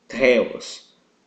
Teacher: como se tivesse uma inspiração junto a letra T · Um exemplo da palavra teta é a palavra Deus em grego, Theos, na qual na pronúncia no grego, a pronúncia correta é Theos, como se tivesse uma aspiração junto à letra T